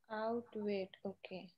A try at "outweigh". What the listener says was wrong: No, it's not weight, dear. It's way only. Last में T नहीं आएगा.